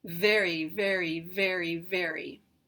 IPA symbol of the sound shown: v